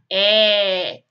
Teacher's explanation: Então, quando a gente utiliza o acento agudo, a gente abre mais o sonzinho dessas vogais